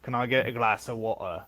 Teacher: they don't even pronounce t sound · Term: cockney accent